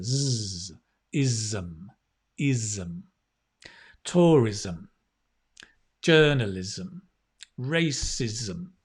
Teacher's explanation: And it's a strong z, right? It's not s, it's z. There's a vibration here.